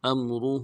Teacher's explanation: کے ساتھ ملانا ہے، میم ساکن میں غنہ کریں گے، ام، را کو موٹا کرنا ہے، ہا کے اوپر الٹا پیش بھی ہے ، مد عارض بھی ہے، دائیں مدار میں کھینچیں گے، امرہ،